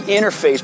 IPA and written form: ˈɪn ərˌfeɪs (INTERFACE)